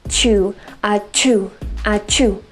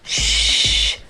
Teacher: You should just feel that air, really quick puff of air versus a stream of air that you would feel with the sound, SH sound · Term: CH sound